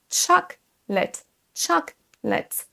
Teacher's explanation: La deuxième chose, ça va être qu'il faut accentuer la première syllabe